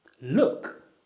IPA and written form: lʊk (look)